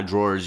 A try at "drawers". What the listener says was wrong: You keep saying drawers like fucking kitchen drawer. Draws. Yeah, it's like draws. If you're gonna say it, you have to say it correctly.